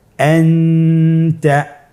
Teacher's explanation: তাহলে এখানে আমাদেরকে নুন সাকিনকে লুকিয়ে গুণনা করে পড়তে হবে। · নুন সাকিন অথবা তানবিনের পরে ইকফার 15টি হরফের যে কোনো একটি হরফ আসলে তাহলে নুন সাকিন তানবিনকে নাকের ভিতরে লুকিয়ে গুণনার সহিত পড়তে হবে। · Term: ইখফা